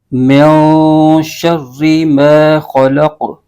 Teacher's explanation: تو یہاں پر اخفا کا قاعدہ ہوگا اور نون ساکن کو غنہ کر کے پڑھیں گے. یہاں پر غنہ ہوگا یعنی نون ساکن کی جو آواز ہے وہ نا کے اندر لے جائیں گے تو یہ غنہ کہلائے گا.